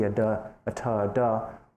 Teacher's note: we call alveolar because the front of the tongue tip is actually placed against the teeth